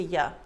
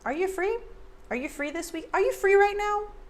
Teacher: a lot of times americans reduce you to yeah